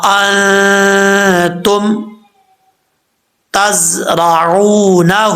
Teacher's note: نون ساکن ہے، اس کو نون ساکن کا اخفا ہو رہا ہے، غنہ کریں گے ایک الف کی مقدار · تا کے بعد زا ہے، یہ زا سیٹی کے ساتھ پڑھا جائے گا، بغیر سیٹی کے زا نہیں ہوتا. اگر اس میں سیٹی نہیں آئے گی تو سمجھ لیجیے گا کہ اپنے مخرج سے ادا نہیں ہوا صحیح طریقے سے.